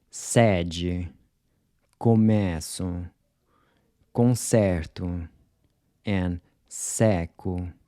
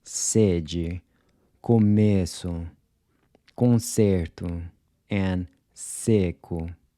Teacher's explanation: notice how much more open your mouth is when you pronounce the open E's compared to the closed E's.